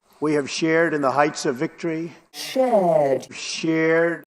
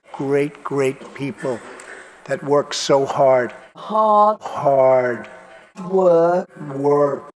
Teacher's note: In the words shared, hard, and work, most Brits will not pronounce the R sound, but most Americans will.